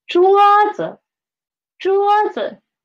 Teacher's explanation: 桌子. We can see z is the neutral tone and the pitch of z is lower than 桌, right? 桌子.